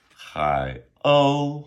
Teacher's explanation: H ai. Third tone. O U first tone.